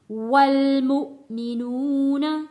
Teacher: حمزہ کے اوپر جزم ہے تو یہاں ہم جھٹکا دے کر پڑھیں گے